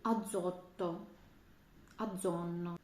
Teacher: дзета між двома голосними саме в таких словах звучить знову ж таки як ДЗ